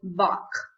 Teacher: Its place of articulation is velar, the posterior part of the tongue touching the soft palate and restrict the flow of air